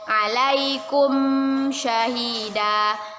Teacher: Ayakunar rasulu alaikum syahida. Mim sukun bertemu dengan huruf sya, yaitu izhar syafawi. Kita baca jelas dari bibir.